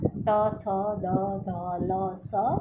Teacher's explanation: દંત્ય એટલે જીભ જ્યારે દાંતની સાથે અથડાય છે ત્યારે એનું ઉચ્ચારણ શક્ય બને છે